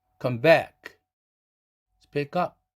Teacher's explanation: come back 했을 때 back이 1강세라면 come은 2강세로 떨어져 준다.